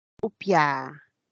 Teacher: el ancashino upia alarga la vocal para decir la primera persona yo tomo